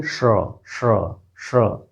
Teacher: ये श तालु से है और र मूर्धा से